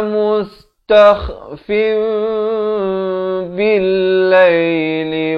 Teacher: Tapi datang ba, ditukarkan bunyi nun itu fin itu kepada bunyi mim jadi fim dengan kadar panjang 2 harakat. Bibir itu sekadar bersentuhan atau hampir bersentuhan, ya. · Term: hukum iqlab